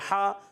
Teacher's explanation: हा अलिफ ज़बर हा, अलिफ मद्दा है, एक अलिफ खींच कर अदा करेंगे, हा अदा होता है हलक के दरमियान वाले हिस्से से